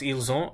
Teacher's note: when I pronounce ils ont, I'm not pronouncing the T.